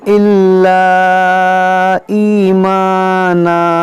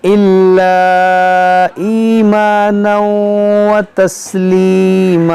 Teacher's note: जो मद है ये मद मुनफसिल है, अलिफ मद्दा के बाद हमज़ा दूसरे कलमे में है